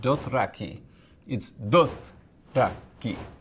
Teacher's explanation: You can't have a syllable that begins with thra. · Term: separate syllables